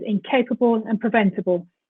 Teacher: we insert a schwa between the b and l